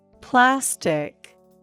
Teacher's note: there are two syllables and the first syllable is stressed